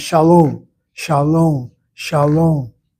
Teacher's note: The Hebrew accent is normally not the first or medial syllable in the word. It's the end.